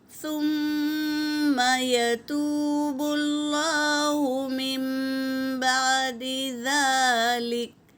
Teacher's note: نون کی آواز کو میم سے بدل کر پڑھنا۔ اور ذال پر کھڑا زبر ہے، ایک الف کی مقدار کھینچیں گے میری بہنوں، ذلیکا نہیں ذالکا۔ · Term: اخلاب